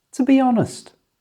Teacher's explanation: It's important that none of it is stressed.